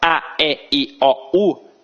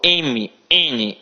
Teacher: Então, a gente tem o oral, só pela boca, e o nasal, quando o som também passar pelo nariz.